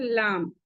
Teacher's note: जबान का किनारा और ऊपर के दरमियानी दांतों के मसूड़े। जबान का किनारा लाम।